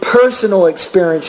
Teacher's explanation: you need to pronounce your P with more air